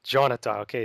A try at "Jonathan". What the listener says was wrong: it's like Jonathan, but without the N at the end.